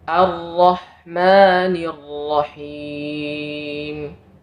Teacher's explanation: seringnya condong untuk dibaca tebal qah Nah itu bacaan yang keliru bacaan yang benar Hamzah wasal tetap dibaca tipis